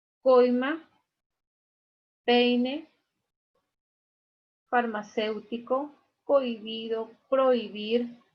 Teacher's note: También pudimos trabajar el diptongo decreciente, donde en primer lugar encontramos a la vocal abierta seguida de una vocal cerrada. Igual que en los anteriores, la vocal abierta lleva la mayor fuerza de voz.